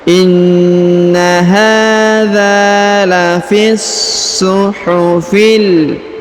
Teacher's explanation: huruf so ditahan dan ditekan, lalu kita baca sempurna